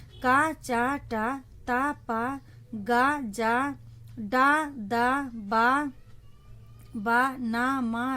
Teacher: सभी वर्ग का पहला व्यंजन और तीसरा व्यंजन क्या है, अल्पप्राण है, अल्पप्राण व्यंजन है।